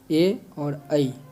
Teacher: कंठ और तालू में जीभ के स्पर्श से बोले जाने वाले वर्ण है ए और ई